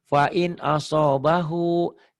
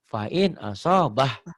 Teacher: kalau disambung diwasol panjang. Tapi kalau dihentikan malah pendek.